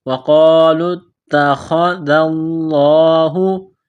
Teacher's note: موٹا کرنا ہے، لام کو تا کے ساتھ پلس کرنا ہے، تا کے اوپر تشدید ہے تو تا کو دبانا ہے، سختی کرنی ہے · ذال کو پڑھتے وقت زبان تھوڑی سی باہر نکالیں گے